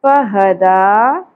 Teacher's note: دال کھڑی زبر دا، ایک الف کے برابر کھینچیں گے